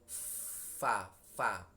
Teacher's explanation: tempat keluarnya adalah bagian tengah dari bibir bawah dengan ujung 2 gigi yang atas